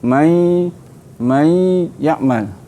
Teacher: Idgham ma'al gunnah, kita membaca dengan idgham berserta dengan dengung.